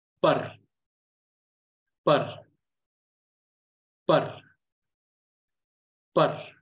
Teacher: So par, you can see that I'm giving it a certain degree of freedom when I'm pronouncing it, meaning that I'm giving it more time to stretch and go into the sound of ra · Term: rolling R sound